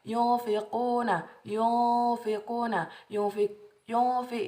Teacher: yunfi itu adalah bacaan ikhfa hakiki. Dia cara bacanya didengungkan dan ditahan